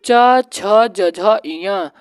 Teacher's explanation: यह तालू वर्ग में आता है